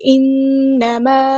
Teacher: یہاں پہ آپ دیکھیں نون پہ غنہ زمانی ہو رہا ہے، ایک الف کے برابر ہم یہاں پہ رکیں گے